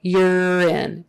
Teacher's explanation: that first U now is pronounced with kind of a Y in front of it. U-R, so Y-E-R, even though it's spelled U-R.